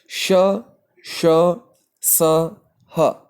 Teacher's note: जिन वर्णों के उच्चारण में मुंह से रगड़ खाकर हवा बाहर निकलती है, जिससे हल्की सीटी की सी आवाज आती है और गर्मी पैदा होती है, उन वर्णों को ऊष्म वर्ण कहा जाता है। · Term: ऊष्म व्यंजन